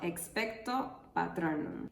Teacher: La palabra expecto tiene una entonación descendente en la última sílaba, lo que significa que la voz debe bajar su tono en esa sílaba.